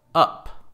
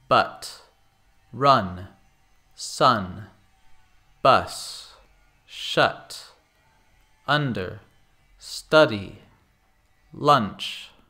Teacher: It sounds very much like the schwa, but it isn't as short and it is pronounced more clearly. We often use this sound in words that do not end in E, where the U is in between consonants. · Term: short U sound